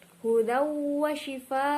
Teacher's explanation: Lah di sini terdapat idgham bihuna karena fathah tanwin bertemu dengan huruf wawu dibaca dengung dan fathah tanwin melebur ke dalam huruf wawu. Lah di sini juga terdapat mad wajib mutasil yang dibaca panjang 5 harokat ketika wasol dan dibaca panjang 6 harokat ketika waqaf.